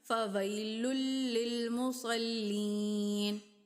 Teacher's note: یا ساکن اس سے پہلے زیر ہے، تو اس کو لمبا کیا ہم نے